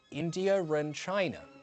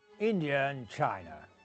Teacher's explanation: In a sentence such as this, India and China, India ends with an a sound. The next word begins with an a sound. So, in regular RP, we join them with an R. · So in regular RP, we'd join them with an R. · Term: linking or joining, R-linking